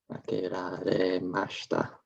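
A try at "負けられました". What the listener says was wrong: Good, yeah. Makeraremashita. Excellent.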